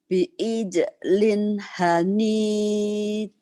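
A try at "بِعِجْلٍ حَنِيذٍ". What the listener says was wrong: Bi'ijlin hanid. Bagus.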